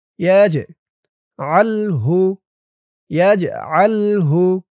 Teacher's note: ওয়ামান ইয়াশা ইয়াজআলহু ইয়া দিয়ে জিম ধরবে। জিমটা কলকলার হরফ ধাক্কা দিয়ে পড়তে হবে।